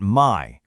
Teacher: Then we've got Mai with a low tone. You drop your pitch low and flat, and suddenly, bam, the word means new.